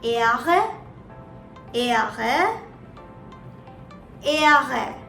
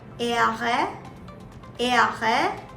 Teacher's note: So, the R in German is pronounced as Ehre, Ehre, Ehre. You see, the behind part of the tongue touches the upper part of the mouth and then you curl it a bit and speak right through your throat